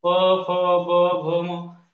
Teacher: प, फ, ब, भ, म या सगळ्या वर्णांचा उच्चार करताना ओठ एकमेकांना चिटकतात किंवा स्पर्श करतात